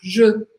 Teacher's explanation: no primeiro E, eu preciso fazer um som mais fechado. Je, porque é o som do E em francês.